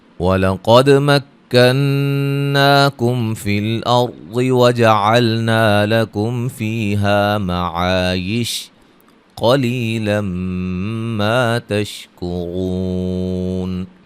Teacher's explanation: قاف کو موٹا دال پہ قلقلہ، نون مشدد پہ غنہ، مد اصلی، میم ساکن کا اظہار، را کو موٹا ادا کریں گے